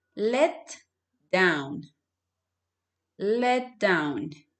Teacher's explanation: you connect the t sound to the d sound.